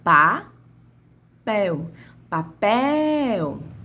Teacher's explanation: A sílaba mais forte, minha sílaba tônica, na palavra papel, é o pel. · A sílaba que mais se estende, a sílaba de maior tonicidade é a pel.